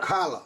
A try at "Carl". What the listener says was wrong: Carl. Not Carla, just Carl. Carl. Carl. Carl. No. No. No. No. Carl. You don't need to add...